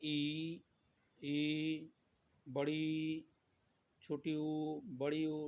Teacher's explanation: जिसके उच्चारण में लगभग मुख बंद रहता है, तो उसे संवृत स्वर कहते हैं।